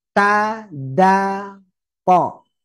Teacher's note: Pastikan kena gusi juga gitu ya. Di pangkal gigi, kena gigi tapi juga gusi.